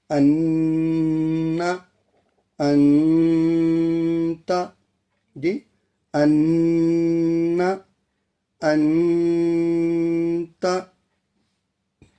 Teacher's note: ناک کے اندرونی حصے سے جی، ناک کا جو اندرونی حصہ ہے اسے خیشم کہتے ہیں۔ ناک کے اندرونی حصے سے غنہ ادا ہوتا ہے